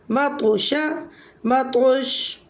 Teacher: تو ساکن حالت میں کلمے کے درمیان میں آ رہا ہے تو یہاں قلقلہ صغریٰ ہوگا